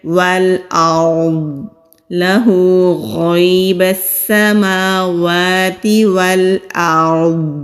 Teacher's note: غیب السماوات والارض، واو کو لام سے، حمزہ کو را سے ملائیں گے۔ را ساکن سے پہلے زبر ہے تو را کو موٹا پڑھیں گے۔ ضاد مستعلیہ حروف میں سے ہے یعنی کہ موٹے حروف میں سے ہے۔ · ضاد مستعلیہ حروف میں سے ہے یعنی کہ موٹے حروف میں سے ہے۔ جب رکیں گے ضاد کو ساکن کر کے رکیں گے، اگر ضاد پڑھنا چاہیں تو بھی موٹا کر کے ہی پڑھیں گے۔